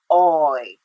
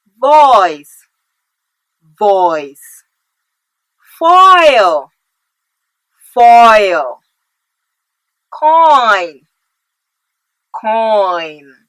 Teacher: the jaw is open about midway and the body of the tongue is in a low position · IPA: /ɔy/